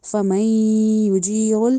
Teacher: फमई यहाँ पे गुन्ना होगा यानी नाक में आवाज़ लेके जानी है